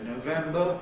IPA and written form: nəʊˈvembə (November)